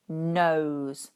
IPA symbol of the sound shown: əʊ